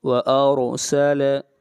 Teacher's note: را سے پہلے زبر آ رہی ہے، را کو موٹا پڑھیں گے